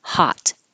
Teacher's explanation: one or more it will sound like the short vowel sound the short vowel sound of O is ah like in the word hot the T tells you that the O should sound like ah